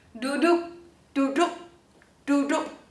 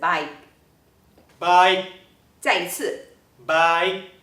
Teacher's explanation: We have to hold onto the k, don’t let it out This is called a glottal stop